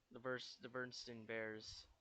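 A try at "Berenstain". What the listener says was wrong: Bernstan. It's not Steen, it's Stan.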